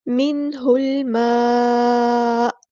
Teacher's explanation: ساکن کے بعد ہا گیا تو یہاں پر ہوگا ہمارا اظہار، ہا کو ہم نے لام کے ساتھ ملا دینا ہے، حمزۃ الوصل ہمارا ڈراپ ہو جائے گا